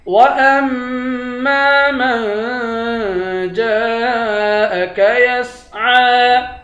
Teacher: میم کو نون کے ساتھ ملا کر نون پر اخفا کریں گے. جیم کے بعد الف ہے، اس الف پر مد ہے، اس مد کو 5 الف کی مقدار کھینچ کر پڑھتے ہیں. عین کے اوپر کھڑا زبر ہے، اس کو بھی ایک الف کی مقدار کھینچ کر پڑھیں گے.